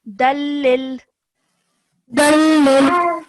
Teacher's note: when you're joining these two letters together, there is no nasal sound in between, okay? Because this is idgham kamil, so because the next letter after tanween is la mushaddad, so we simply join it dalil.